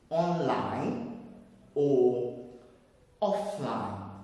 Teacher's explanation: the vowels on that second syllable are taking their normal sound. They are not changing to schwa because we said online, not online.